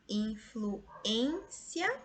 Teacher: Aqui é a minha sílaba tônica mais forte, que é a penúltima. E aqui eu tenho um ditongo crescente no final. · E aqui eu tenho um ditongo crescente no final. Então, B, minha resposta, que segue a mesma regra de gênio, de tênue, de amêndoa, mágoa, supérfluo, Sérgio. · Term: paroxítona